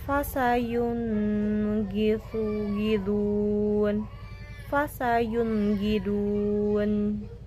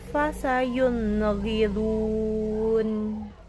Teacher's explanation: Jadi tidak ada tambahan durasi dalam pelafalan nun sukun. Jadi nun sukunnya ini dibaca jelas. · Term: izhar